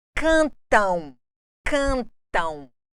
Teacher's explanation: o m adquiriu aqui o som do U nasal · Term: ditongo nasal